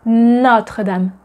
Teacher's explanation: Notice that notre is not notre, but notre. The O is open and not closed. We don't say Notre-Dame, we say Notre-Dame.